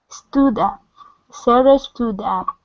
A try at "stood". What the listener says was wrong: So here you're saying stew. You're pronouncing an oo. Okay, so when we do this, the difference between an oo and is the position of your tongue, as well as where you're placing the sound.